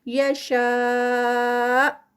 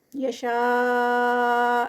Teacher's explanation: یشاء اور یہ جو مد ہے مد متصل اور یہ سٹاپ پر ہے تو یہاں پر اس کا 4 کاؤنٹس کا ہی اسٹریچ ہوگا لیکن آگے حمزہ آ رہا ہے تو یہاں پر جرک کے ساتھ ہم اس کو روکیں گے. یشاء اس کو اس طرح سے ایک دم سے جیسے آواز جاتے جاتے رک جاتی ہے.